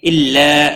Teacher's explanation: لا الف مدہ ہے، ایک الف کے برابر کھینچ کر پڑھیں گے